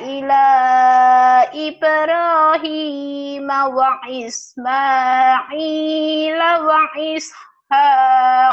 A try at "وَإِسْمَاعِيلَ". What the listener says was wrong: Ainnya jangan alifnya jangan ke alif wa Ismail.